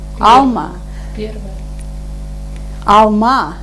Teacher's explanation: Последнее А, конечно, потому что находится под ударением.